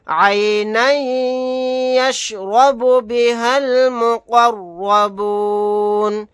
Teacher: یہاں پر قاف اور را کو موٹا پڑھیں گے، آیت کرنے کی صورت میں نون کو ساکن بنا کر پڑھیں گے۔ · نون کے اوپر تنوین ہے، تنوین کے بعد یا آ گیا تو یہاں پر ادغام کر کے پڑھیں گے، یا کے اندر ادغام کر کے پڑھیں گے۔